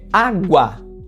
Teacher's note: água, nós temos um ditongo na última sílaba, no guá, e ela é uma palavra paroxítona. Veja que ela é terminada em a, mas no caso é esse a ele está num ditongo, formando uma sílaba gua de água.